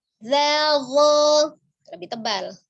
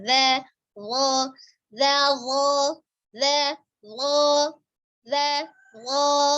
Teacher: Za itu huruf tipis, berarti dia istifal. Kalau dho-nya dia tebal, berarti isti'la. Ya, pangkal lidahnya naik.